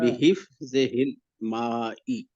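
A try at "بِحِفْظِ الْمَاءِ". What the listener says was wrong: बिहिफ्जी हिल, ही तो है ही नहीं यहाँ पे।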